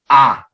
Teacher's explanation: 처음에는 이 했다가 나중에는 아 이렇게 해서 입모양이 달라지죠. 그래서 해서 야가 되는 거죠. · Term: 이중모음